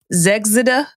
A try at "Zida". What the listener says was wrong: you mess up something silent there you pronounced every single letter